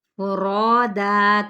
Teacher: فا کی پیش کو کھینچیں گے نہیں، را پہ الف مدہ، را پر پڑا جائے گا